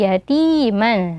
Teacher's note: ya sukun sebelumnya huruf berharokat kasroh, maka dibaca 2 harokat mad tabi'i